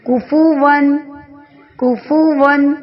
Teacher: تنوین کے فوراً بعد حمزہ آ گیا ہے تو حمزہ حرف حلقی میں سے ہے، اظہار کر کے پڑھیں گے